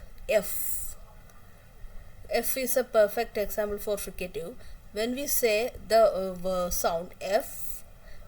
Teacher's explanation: When both the articulators are very close to each other and air comes out through a narrow passage with audible friction, we get fricative consonants.